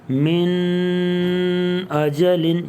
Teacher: تو یہاں پہ ہم غنہ نہیں کریں گے، اس کو من اجلن یہ اظہار کر کے پڑھیں گے۔